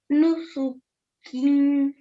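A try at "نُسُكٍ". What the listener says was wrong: Nusukin. Okay, now the nasal sound is where you're going to hold it, not before that, okay? Kin. Nusukin.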